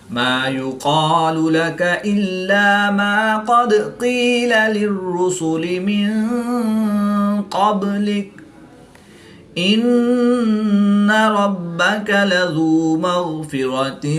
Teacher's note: قاف حروف مستعلیہ میں سے ہے اور غین بھی حروف مستعلیہ میں سے ہے تو ان کو پور یعنی موٹا پڑھیں گے۔